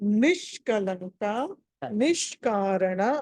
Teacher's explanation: నాలుక వెనకాలకి మెలికి తిరిగినట్టుగా ఈ సా అంటే అప్పుడు ఆటోమేటిక్గా షా అయిపోతుంది మీకు